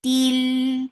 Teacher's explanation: this is idgham without gunna, so you are not keeping sound in your nose at all.